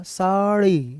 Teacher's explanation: ड़ी करोगे तो जीभ जल्दी आ जाएगी, साउंड बाद में निकलेगा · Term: उत्क्षिप्त